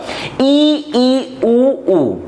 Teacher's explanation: जब मुख को पूरा बंद करके उच्चारित स्वरों का उच्चारण किया जाता है तो इसे कहा जाता है संवृत स्वर